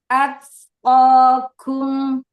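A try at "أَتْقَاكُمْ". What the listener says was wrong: Mm-mm. Kum monyongin domah. Kum kum kum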